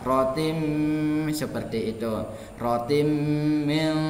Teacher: didengungkan sekitar lebih kurangnya 2 harokat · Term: idgham biguna